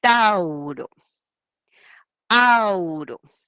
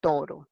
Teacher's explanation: Au, diptongo, pasa como una O. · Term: monoptongación